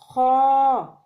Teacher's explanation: خو کو ادنی حلق سے ادا کرنا پڑتا ہے